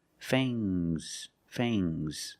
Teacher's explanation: Use a long A plus the nasal sound and a soft G.